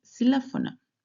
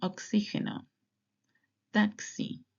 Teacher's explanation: Usually when it's at the beginning of the word, it sounds like an S